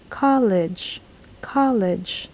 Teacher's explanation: there is no why or ye sound in there at all so we should not add that